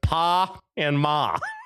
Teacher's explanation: The actual vowel sound is very flat and nasal ah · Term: ah sound